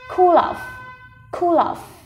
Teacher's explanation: Và chỗ này có nối âm này. Cool kết thúc bằng nối với of